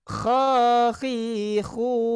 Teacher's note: Kho-nya itu mesti ada getaran, jangan dilepas, jangan ho, jangan gitu.